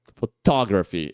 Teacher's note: quando a gente fala photography que é fotografia a sílaba tônica muda e vai pra segunda sílaba